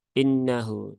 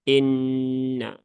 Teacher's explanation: Sehingga tunaikan dulu ya gunnahnya, jangan tergesa-gesa. Nah, jadi jangan dibaca innahu tapi inna ya, ditahan dulu 3 harokat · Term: gunnah musyaddadah